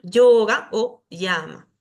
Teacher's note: cuando la ya está al comienzo de una palabra se pronuncia como una y pero suave